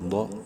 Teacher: ضاد کو بھی پراپر اپنے مخرج سے یعنی زبان کی سائڈ اوپر والی ڈاڑوں کی جڑ